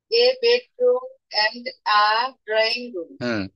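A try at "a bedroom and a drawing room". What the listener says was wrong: এ কে আ বলবো, ধন্যবাদ।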